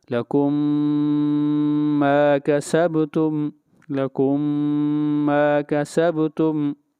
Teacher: لَكُم یہاں پر میم ساکن ہے، میم ساکن کے بعد میم آ گیا تو پہلی میم کو دوسری میم میں ملا دیا۔ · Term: ادغام